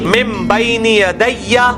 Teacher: یہ وہی اقلاب آ گیا، نون ساکن کے بعد با ہے تو نون میم میں بدل جائے گا